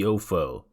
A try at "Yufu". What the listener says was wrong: Yufu. There's 2 O's, 3, it's Yufu. No, it's Yoo, the double O sound.